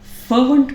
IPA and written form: ˈfɜːvnt (fervent)